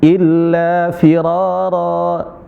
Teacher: Jadi ketika waqaf illa firaro ya dibaca panjang bukan firaron